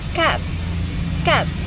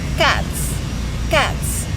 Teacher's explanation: The ending S stay S because the sound T is voiceless. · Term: progressive assimilation